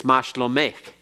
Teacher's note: But sometimes it's a softer K, usually at the end of a word. And at the end of the word, it, instead of having the hard closing sound, it almost sounds like cheth at the end